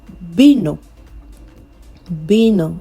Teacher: in Spanish, the V sound does not really sound like a V. The V sound now changes to B.